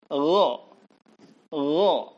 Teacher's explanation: Gho ini keluar juga di tenggorokan bagian atas.